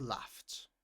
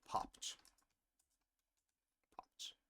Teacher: Whenever a word ends with a f sound and then you add e d, the sound is t. The ed is pronounced uh like a t.